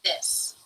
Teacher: air passes through the mouth, and is voiced, meaning you make a sound with the vocal cords. To make this sound, the very tip of the tongue comes through the teeth.